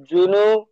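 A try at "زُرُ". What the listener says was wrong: রপেশ, রপেশ নু হয় না, রপেশ রু। জুরু।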